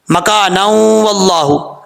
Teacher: اگر آپ ملا کے پڑھ رہے ہیں تو پھر نون کو واو سے ملائیں گے، پھر ادغام یرملون ہوگا